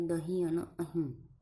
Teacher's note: પડજીભ જ્યારે ઉચકાય પણ નહીં અને સ્થિત પણ ન બને મધ્યમ સ્થિતિમાં રહે તેને તે સ્થિતિમાં ઉચ્ચારાયેલો ધ્વનિઓને અનુના સાનુનાસિક સ્વરો કહે છે ઉદાહરણ